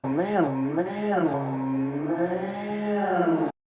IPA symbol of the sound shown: æ